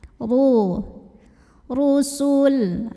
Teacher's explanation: Min qablihi ru, ra-nya dibunyikan secara tafkhim karena ra-nya berbaris dhammah. Cara bacanya adalah ditebalkan, pangkal lidah diangkat.